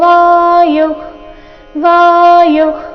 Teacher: ವಿಸರ್ಗದ ಉಚ್ಚಾರಣೆ ಇಲ್ಲಿ ಅರ್ಧ ಖ ರೀತಿ. ವಿಸರ್ಗದ ನಂತರ ಖ ಅಥವಾ ಕ ಬಂದ್ರೆ ವಿಸರ್ಗದ ಉಚ್ಚಾರಣೆ ಅರ್ಧ ಖ ರೀತಿ ಮಾಡಬೇಕು.